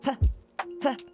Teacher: So P, P, no vibration. If you touch your throat, you will see there is no vibration of the vocal cords. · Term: voiceless